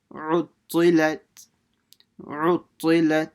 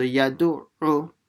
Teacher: So the ayn is pronounced from the middle of the throat.